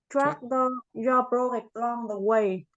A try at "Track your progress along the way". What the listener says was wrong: Again, this one is progress. Thì anh thì nhớ là có âm lên lúc nào, có âm lên âm xuống nha, không có học ngang được, là progress, right?